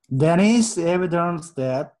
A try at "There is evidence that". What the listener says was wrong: 여기 알 발음 없어요. 알 발음이 없는데 꼬는 거는 너무 촌스러워. 자, 아까 F 발음처럼 이 V하고도 똑같아요. 이빨로 깨물어요. 아랫입술을. Evidence. Evidence.